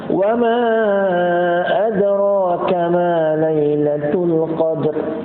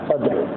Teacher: Nah, waqaf atas huruf ra, bukan waqaf atas huruf dal. Kalau dal yang meletup qalqalah, qadr.